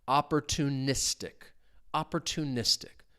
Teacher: the stress is on that second to last syllable